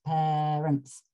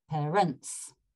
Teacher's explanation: the earlier version has the emphasis on the first syllable of parents, so it's parents with a crotchet on the first syllable, and Vaughan Williams is parents, which sounds a bit funny, but that's what it says, with a crotchet on the second syllable.